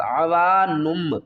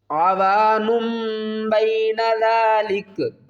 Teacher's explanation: ہے، یہاں پر اقلاب کا قاعدہ ہوگا غنے کے ساتھ، عوانم، نون نہیں پڑھیں گے، اس کو ہم پڑھیں گے نم